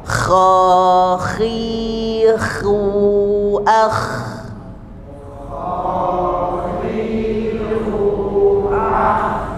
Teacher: usahakan ada getaran pada bagian atas tenggorokan. Jadi tidak hanya hembusan tapi ada getaran. Kha. Meskipun tidak terlalu jelas terdengar, tetapi usahakan ada tetap getaran untuk membedakan dengan ha. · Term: huruf kha